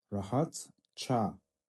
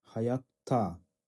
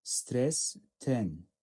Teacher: Яғни қатаң дауыссыздан кейін бұл жалғауда қатаң болып өзгерді. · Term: үнсіз benzeşmesi